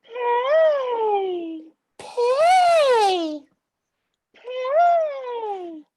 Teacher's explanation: It's nice and high, but it's nice and steady, consistent. There's no cracks in it.